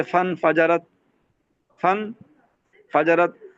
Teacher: اب یہ تھا فإن فجرت، ہم نے فا کو نون کو ملا دیا تو یہ حمزہ غائب ہو گیا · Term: حمزہ وصلی